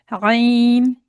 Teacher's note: इसकी आवाज हल्क से निकाली जाती है। और अगर इसकी आवाज हल्क से नहीं निकलेगी तो इसकी आवाज हमजा के जैसी हो जाएगी।